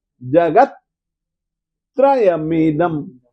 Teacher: फिर से बोलिए निर्ध कष्ण जगत जगत त आधा है ना तो आधे त के साथ में आप स्वर मत जोड़ो